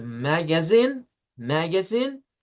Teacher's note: la más común de hecho es la primera donde al final se le da la fuerza de voz